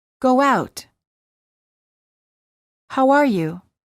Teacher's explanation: insert a short W sound after the word how and Link the words together